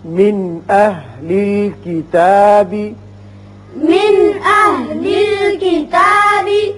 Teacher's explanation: یہاں نون ساکن کے بعد حمزہ و شکل الف ہے جو حروف حلقیہ میں سے ہے، لہذا یہاں نون ساکنے پر اظہار حلقی ہوگا